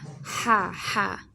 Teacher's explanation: Adams Apple থেকে উচ্চারণ হয় লম্বা হা